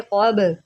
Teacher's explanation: बा जो है ये हरूफ क़लक़ला में से है, यहाँ पर हम क़लक़ला करेंगे। इसको आप कब नहीं पढ़ेंगे, इसको आप पढ़ेंगे क़ब। · क़ाफ जो है हरूफ मुस्तअलिया में से है, इसको हमने मोटा करके पढ़ना होता है। बा जो है ये हरूफ क़लक़ला में से है, यहाँ पर हम क़लक़ला करेंगे।